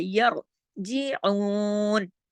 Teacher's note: را خود ساکن ہے لیکن اس سے پہلے زبر ہے، اس کا اثر جو اس زبر پہ پڑتا ہے تو را موٹا ہو جاتا ہے